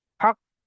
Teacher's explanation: কিন্তু যখন আমরা ওয়াকফ করব অর্থাৎ দাঁড়াবো, তখন এখানে সাকিন হয়ে যাবে। আর হরুফে কলকলা পাঁচটি অক্ষরের মধ্যে থেকে এখানে কফ এসছে, তো সাকিন করার সময় একটু ঝাটকার সঙ্গে পড়তে হবে